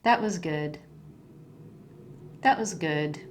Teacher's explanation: can you hear the falling at the end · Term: falling intonation